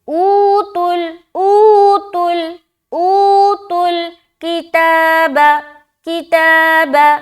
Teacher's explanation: ऊ में खींच रहे, ता में खींच रहे, बाकी कहीं नहीं खींचना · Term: वाव मद्दा